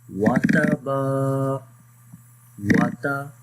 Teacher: We are not longing here, we only long the ba because there is a madda letter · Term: alif madda